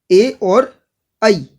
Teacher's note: ए और आई दोनों का उच्चारण स्थान कंठ ताल्लु है और इन वर्णों को कंठ तालव्य वर्ण भी कहा जाता है।